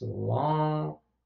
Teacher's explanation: there is nasalization of the vowel in long because of the fact that that word ends with the ng nasal consonant sound. So it's long, starts out as long, as a nasalized vowel and then ends with long. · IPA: [lã], [lɑ̃ŋ]